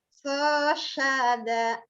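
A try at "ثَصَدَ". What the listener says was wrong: Sa-nya ujung lidah melet. So sada ngelel Bu, ujung lidah.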